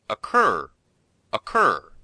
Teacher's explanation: be sure to put the stress on the second syllable, not the first.